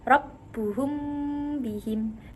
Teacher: Karena mim dan ba sama-sama tempat keluarnya pada dua bibir. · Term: ikhfa syafawi